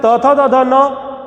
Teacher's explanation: उसी तरह से त थ द ध न ये त वर्ग की ध्वनियां हैं और इनका उच्चारण दंत से होता है।